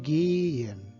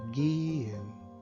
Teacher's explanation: note que o H ele não é pronunciado, ele simplesmente vai indicar que o E é longo.